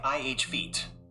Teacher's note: ih feet with the stress on the second syllable